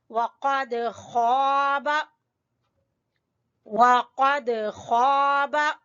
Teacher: बा को छोटा पढ़ेंगे, खा को खींचेंगे अलिफ मद्दा की वजह से